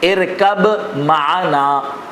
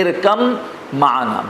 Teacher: ارکب معنا، تو سوار ہو جا ہمارے ساتھ، لیکن اس کو ہم پڑھتے ہیں ارکم معنا. با کا بالکل تلفظ نہیں ہوتا